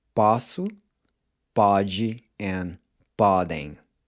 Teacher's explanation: it should be pronounced with an open O, as in the A in awesome. The standard spelling is just with a regular O.